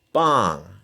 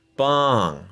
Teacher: And then bang, falling tone.